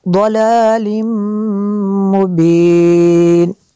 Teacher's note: تنوین کے بعد میم ہے حروف غیر معلوم میں سے تو یہاں پہ بھی ادغام ہوگا، غنہ کریں گے